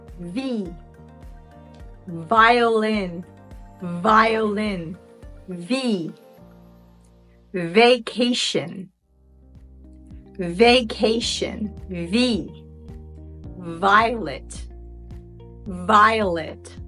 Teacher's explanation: position as when you're making the sound for the letter F your top front teeth are on your lower lip oh only with v we need to use our vocal cords to make that sound